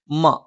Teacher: മ രണ്ടു ചുണ്ടും തുല്യമായി അടച്ചുവെക്കണം